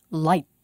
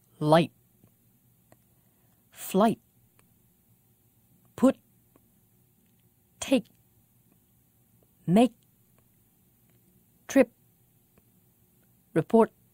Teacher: All of them have this glottal stop at the end of the word.